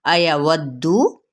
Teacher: अयवद्दु, वाव की ज़बर को दाल के साथ मिलाएंगे, दाल को सख्ती से अदा करते हुए यानी दबा कर पढ़ते हुए ना, दाल की पेश को लंबा नहीं करेंगे